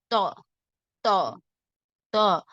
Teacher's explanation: நாவின் நுனி மேல் முன் நடு பற்களின் வேரில் நன்கு அழுத்தும் போது உண்டாகிறது.